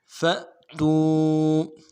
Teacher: میں کھینچیں گے، نون الف زبر نا، عبدنا على عبدنا فأتوا، فا کے بعد حمزہ ہے، حمزہ کے اوپر جزم ہے، اس وجہ سے جھٹکا دیں گے